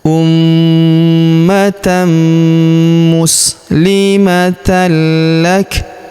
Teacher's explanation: Kita berikan hembusan tipis pada huruf K karena kita sukunkan ya.